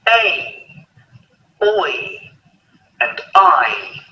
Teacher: each sound ends with an E sound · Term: diphthong